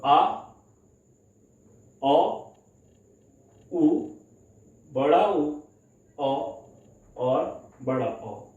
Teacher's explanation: पश्च स्वर में जिनमें बोलते समय या उच्चारित करते समय जीभ के पिछले हिस्से का प्रयोग होगा या पश्च भाग का प्रयोग होगा, उनको क्या कहते हैं, पश्च स्वर।